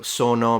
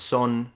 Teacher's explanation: when they speak Italian, even if they're speaking Italian, not their regional variety, they tend to kind of remove the final vowel a lot. So sono becomes son, bene becomes ben, tutto ben. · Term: cut the final vowel